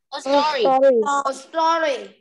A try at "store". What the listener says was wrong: Store, không có story đâu nha, store.